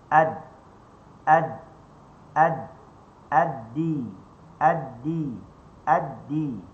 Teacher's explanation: Okey. Ad-din, huruf dal, hujung lidah berada di gusi, tempat tumbuh gigi.